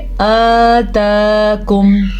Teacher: हमज़ा के ऊपर भी खड़ी ज़बर, ता के ऊपर भी खड़ी ज़बर, तो दोनों को खींच के पढ़ेंगे।